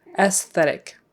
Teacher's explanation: you do pronounce the S after the E and it's an S sound not a z